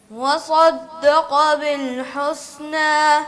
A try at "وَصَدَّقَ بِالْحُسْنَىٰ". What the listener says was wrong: آپ نے بھی سین کو سا کی طرح پڑھا ہے. حسنى نہ ہو نا. نا میں تھوڑی سی ناک میں آواز.